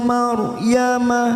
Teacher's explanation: ra sukun kita baca afkim karena didahului fathah